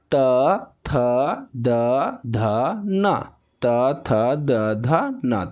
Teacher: दांत में आपका जीभ सटेगा, इसलिए उसको बोलते हैं दंत वर्ण